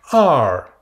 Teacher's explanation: Donc c'est un E très ouvert suivi d'un R. La prononciation qui ressemble un peu à l'anglais américain.